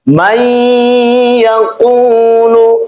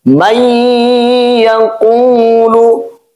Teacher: bunyi nun mati itu hilang, kita anggap saja nunnya tidak ada, kita kasih tasydid kepada huruf iya-nya, dan kemudian kita tahan menjadi may yaqulu. Ini contoh nun mati bertemu dengan huruf ya, bagian daripada huruf idgham bi gunnah atau ma'al gunnah.